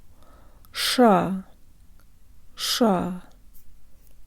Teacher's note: the tongue comes away from the teeth for the second syllable the tip curves up but the rest of the tongue is low